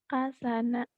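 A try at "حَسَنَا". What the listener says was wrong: Orang Indramayu nih medok banget. Hanya jadi kak. Hasana. Hasana.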